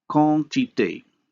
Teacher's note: In French, a low vowel is nasalized when followed by a nasal consonant. So the result is that instead of having two segments, that is a vowel and a nasal consonant, we end up having only one, a nasalized vowel. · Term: vowel nasalization